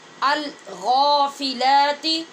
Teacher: غین کو پر بھی کرنا ہے اور کھڑی زبر کی وجہ سے آواز لمبی بھی ہوگی